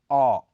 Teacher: इसमें मुंह ओ स्वर की तरह लेकिन उससे थोड़ा कम गोलाकार हो जाता है